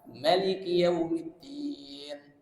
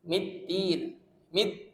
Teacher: huruf Dal makhrajnya di ujung lidah menyentuh dengan gigi seri atas